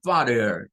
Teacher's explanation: Es de las que en inglés norteamericano esa doble T no suena a T, porque los británicos lo dicen como fatter, fatter, haciendo sonar mucho la T. En cambio, los estadounidenses lo dicen como father, como es una R o D. A veces la hacen como D, father, y a veces la hacen como R, father.